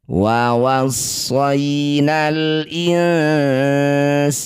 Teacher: Ini ada alif diikuti lam sukun disebut bacaan izhar qamariah. Baca jelas lam sukunnya jangan diseret-seret.